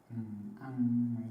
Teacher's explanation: ออกเสียงโดยไม่เปิดปากมากจะมีเสียงขึ้นจมูก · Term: นิคหิต